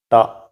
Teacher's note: in malayalam the first sound is ta which is a retroflex sound